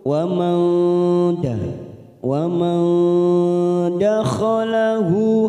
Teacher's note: Wa man nun sukun bertemu dal, ikfa hakiki kita samarkan 3 ketuk.